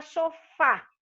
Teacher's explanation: a sílaba forte é fá. Então, ela é oxítona terminada em A.